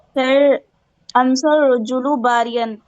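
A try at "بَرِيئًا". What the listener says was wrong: बारियन नहीं बेटे, बरी बोलेंगे, बरीअन, बरीअन। अलग मत, हाँ बरीअन, बरीअन।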